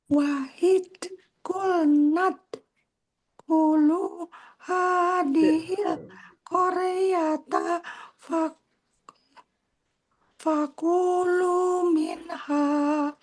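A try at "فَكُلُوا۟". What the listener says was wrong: Fakulu minha. Sama qalqalahnya belum jadi Bu.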